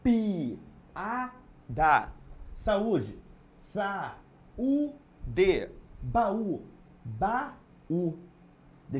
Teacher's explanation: separar as suas vogais porque as duas são tônicas são forte não podem ocupar a mesma sílaba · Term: hiato